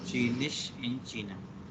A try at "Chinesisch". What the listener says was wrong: Chinesisch, nicht Chinisch, Chinesisch.